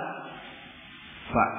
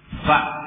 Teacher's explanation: gigi seri ditancapkan ke batnusyafah bagian perut bibir atau bibir bagian dalam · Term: makhrajnya Fa